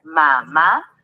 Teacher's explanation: acento ortográfico vamos con la siguiente al separarla en sílabas mamá tu sílaba tónica se escucha en la última ma